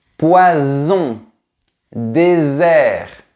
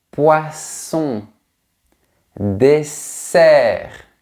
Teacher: Les deux sons sont presque identiques, mais le premier vibre au niveau des cordes vocales, Z, et le deuxième ne vibre pas, S.